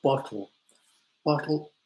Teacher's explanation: we'll kind of swallow the the two t's bottle bottle the technical word is a glottal stop